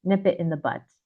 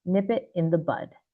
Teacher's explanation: people mishear the D sound. Instead, they hear T.